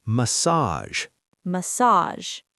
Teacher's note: Stress is at the end, and the G sounds like a soft J.